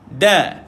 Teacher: huruf nipis, dia lidah tidak terangkat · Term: huruf istifal